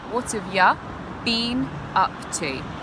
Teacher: So you in the sentence actually becomes ya, and we have a schwa sound, which I hope you guys know is when the mouth is relaxed